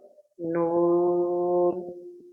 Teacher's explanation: ज़बान का सिरा और तालू का अगला सख्त हिस्सा से नून, यानी ज़बान की नोक रहेगी और तालू दांत के ऊपर वाले दांत के जस्ट हल्का सा पीछे ज़बान तालू में सटाएंगे, वहाँ सख्त हिस्सा जो है, जहाँ दांत की जड़ हम कह सकते हैं, वहाँ से नून अदा करते हैं।